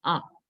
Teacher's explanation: A is an example for low vowel because the tongue is low inside the mouth.